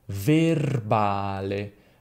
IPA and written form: verˈbale (verbale)